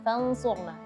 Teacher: setelah dengung dituntaskan baru bibir kita bergerak ke harakat dhammah karena shadnya dhammah